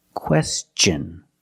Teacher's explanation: When tio n is after an s then it's pronounced differently. It's pronounced with the ch sound. The hard ch sound like chicken and change.